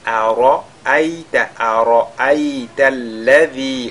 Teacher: nous avons la lettre Ra qui est avec At-Tafkhim